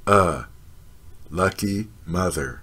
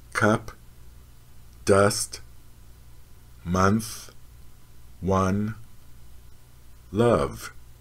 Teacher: the jaw is lowered halfway with the mouth half open the lips are unrounded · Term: lucky mother vowel